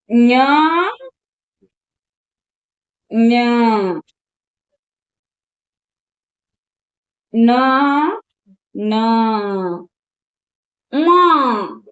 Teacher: ಅನುನಾಸಿಕ ಅಂದ್ರೆ ಏನಪ್ಪಾ ಅಂದ್ರೆ ಮೂಗಿನ ಸಹಾಯದಿಂದ ಉಚ್ಚರಿಸಲ್ಪಡುವ ಅಕ್ಷರಗಳನ್ನು ನಾವು ಅನುನಾಸಿಕ ಅಕ್ಷರಗಳೆಂದು ಕರೆಯುತ್ತೇವೆ.